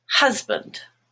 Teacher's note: in the word husband, hus, which is mustard, is the stressed part, and band becomes bund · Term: schwa